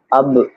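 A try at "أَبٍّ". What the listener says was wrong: এরকম না, আব না, আব। মানে ডবল এটা রিপিট হবে আর কি। ওই যে তাব্বাত ইয়াদা আবি লাহাবি ওয়া তাব, এরকম।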